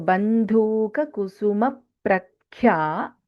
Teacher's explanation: Bandhuka, dha is Mahaprana.